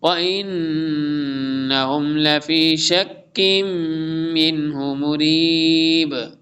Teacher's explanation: نون مشدد ہے غنہ ہوگا ادغام بھی ہوگا